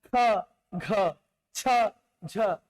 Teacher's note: दूसरा और चौथा में शवास अधिक मात्रा में निकल रहा है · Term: महाप्राण